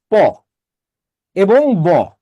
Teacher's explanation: প এবং ব এর উচ্চারণে আপনাদের দুটো ঠোট একসাথে কাজে লাগে